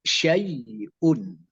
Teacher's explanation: Saat ya sukun didahului baris atas, juga lenturkan vokal A dan I. Syai'un, jangan syai'un, jangan E, tapi A sama I. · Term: sifat lin